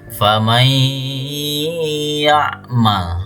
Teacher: Famay ya'mal dibaca dengung dan nunnya menyatu dengan huruf ya. · seakan-akan nunnya tidak ada, tapi langsung menjadi huruf ya, langsung dibaca ya. Faman ya'mal dibaca dengung dan nunnya menyatu dengan huruf ya. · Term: idgham bighunah, nun sukun bertemu dengan ya